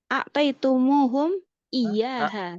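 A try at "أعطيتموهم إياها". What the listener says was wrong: A'taituhum. Tuh ya, bukan tumum. A'taituhum.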